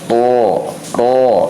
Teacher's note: ro ini memiliki sifat getaran atau takrir ya, dan takrirnya ini tidak berlebihan, cukup 2 getaran saja kurang lebih ya · Tapi di dalam pembahasan makharijul huruf, bahwasannya huruf ro ini nempel si punggung lidah, ujung lidah hampir ke punggungnya itu nempel kepada dua gusi dua gigi seri atas atau gusi depan ya, gusi dua gigi seri atas.